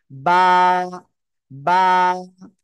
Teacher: করা যাবে না দুই ঠোঁটের ভিজা অংশ থেকে বা উচ্চারিত হবে বা হরফে এক আলিফ টেনে পড়তে হবে